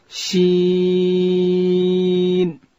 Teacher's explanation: حرف شین د ژبې د منځ څخه ادا کیږي چې کله د ژبې منځ لوړ تالو ته ورپورته کو